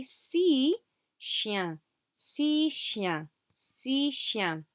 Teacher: We do not pronounce this final X, okay?